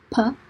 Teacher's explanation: you put your lips together and there's air that's completely blocked for one point so you're stopping the airflow and then you release it if i don't voice my vocal